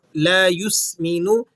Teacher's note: سین کو آپ نے سیٹی سے ادا کرنا ہے اور نون پر پیش ہے تو آپ اسے کھینچیں گے نہیں،